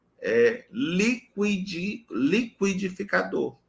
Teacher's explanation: no liquidificador eu já reconheço essa presença desse u pronunciado